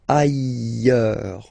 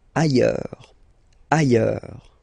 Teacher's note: final S not pronounced, and then you've got this y sound